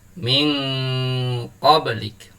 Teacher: Cara membacanya, suara nun sukunnya disamarkan kemudian didengungkan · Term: ikhfa hakiki